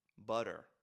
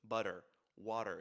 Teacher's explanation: However, it's not always pronounced t. In the middle of two vowels, it's pronounced r. butter. At the very least, if that t is starting an unstressed syllable.